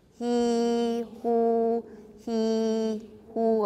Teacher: You should feel the tongue going from front to back as you say he, who. You can also feel your lips becoming more rounded.